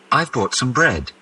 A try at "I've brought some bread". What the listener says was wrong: Don't say some. Here the word is complete. Here the words are not complete. We use schwa sound, which means